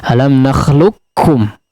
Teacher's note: ketika dibaca qafnya masuk betul-betul melebur secara sempurna kepada kaf, ya. Alam nakhluqkum langsung menjadi kaf.